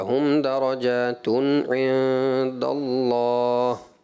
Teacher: تنوین کا جو نون ساکن ہے اس کو ہلانا نہیں ہے، کلکلا والی صورت نہ ہو. ابھی آپ نے پڑھا ہم درجاتن تن نہیں ہوگا، ہم درجاتن عند اللہ، ٹھیک ہے.